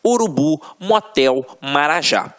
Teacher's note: É quando a sílaba tônica está na última sílaba. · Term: oxítonas